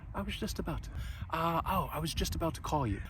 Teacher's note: the two has more of a schwa sound